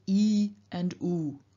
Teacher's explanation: the e and the u preceding it are lengthened